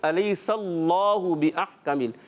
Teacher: تھوڑا رکنا ہے تشدید میں، اتنا نہ کہ سکتہ ہو جائے یا وقفہ ہو جائے